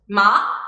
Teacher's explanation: the line goes up, so it's a rising tone · Thinking about the analogy with English language or the intonations which are particular for our language, I would say this is a question intonation, because when we ask a question, the intonation is rising, and this is how the second tone is being pronounced